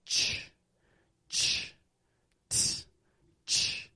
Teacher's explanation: The air builds up and then it releases as a burst coming through your teeth and your lips. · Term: CH sound